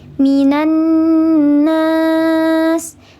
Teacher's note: Karena ada lam sukun bertemu dengan huruf syamsiyah, yaitu nun bertasydid, sehingga lamnya dibaca samar. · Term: lam syamsiyah